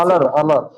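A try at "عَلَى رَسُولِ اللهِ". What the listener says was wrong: না, তখন এই তাসদিদটাও থাকবে না। আলা, আলা রসুলিল্লাহি।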